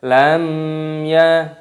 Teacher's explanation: hukumnya dibaca izhar syafawi jadi dibaca jelas tidak boleh didengungkan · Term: idhar syafawi